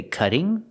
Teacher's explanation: with a double T making a D sound, a fast D